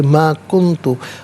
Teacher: کنتو میں نون ساکن اس کے بعد تا حرف اخفا ہے تو نون ساکن کو اخفا کے ساتھ پڑھیں گے